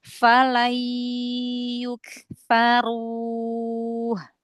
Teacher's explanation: Masuk ke hidung gunanya, tapi jangan berdenging ya.